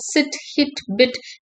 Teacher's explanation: hence E is a front, close, short, unrounded vowel.